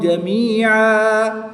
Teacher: 2 زبر کی تنوین کو وقف میں الف مدہ سے بدل دیں گے۔